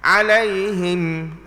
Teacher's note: Jangan dipanjangkan dia dengan dengung. Kerana di situ bukan tempat dia untuk dengung.